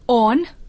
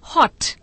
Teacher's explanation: ओ बराबर अ, ह्रस्व उच्चारण है ये